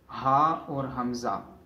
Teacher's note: हमज़ा और हा ये दोनों हरूफ गले के नीचे वाले हिस्से से अदा होते हैं।